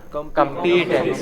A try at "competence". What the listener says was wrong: No. The first part is stressed. Competence.